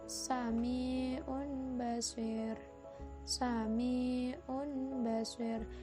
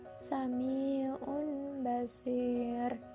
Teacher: ro-nya itu dibaca tipis, tidak pakai tekanan, dan cara membacanya itu mulut tidak menyongkong ke depan, jadi biasa saja, sami'un basir. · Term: tarkik